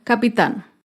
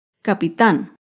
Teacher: capitán es una palabra aguda se acentúa en la última sílaba y lleva tilde porque termina en la consonante n capitán otro